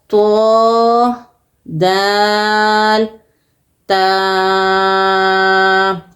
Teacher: زبان کی نوک اور اوپر کے دانتوں کی جڑ سے تینوں ورڈز ادا ہوں گے